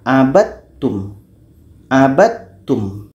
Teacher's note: Supaya idgham kamil terjadi di sini, maka bunyi da masuk kepada ta.